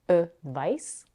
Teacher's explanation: the noun advice, which is pronounced with the voiceless consonant s at the end